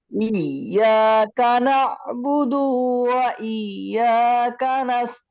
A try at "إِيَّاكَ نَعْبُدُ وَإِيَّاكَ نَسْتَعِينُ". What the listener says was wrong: ইয়াকা না'বুদুর পরে ডালের মধ্যে হালকা একটু টান হয়ে গেছে, আবার বলেন টান ছাড়া, খেয়াল করে। কানা বুদুর পরে হালকা টান হয়ে যায়, টানের কারণে কিন্তু অর্থ চেঞ্জ হয়ে যাবে ভাই। ইয়াকা না'বুদু ওয়া ইয়াকা নাস্তাঈন।